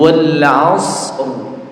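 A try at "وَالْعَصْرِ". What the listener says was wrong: W mana rnya Wal ini kita sedang mempelajari ro tafkhim ya kalau Wal as Berarti rnya enggak ada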